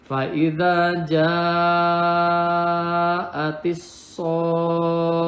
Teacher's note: Nah ini fa'idha ja'atis, ini alif lamnya alif lam syamsiah, jadi lamnya tidak dibaca jelas, langsung ke tasydid yang ada di sod. Kemudian so-nya adalah ini mad lazim musaqqal kilmi, jadi setelah tanda mad ini ada huruf bertasydid, dibacanya 6 harokat ya, wajib 6 harokat dan ditasdidkan.